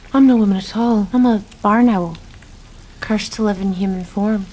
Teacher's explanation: a lot of people I think because of her vocal fry thought she sounded like American